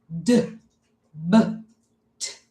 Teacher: We just let out a burst of air and it stops. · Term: stop sounds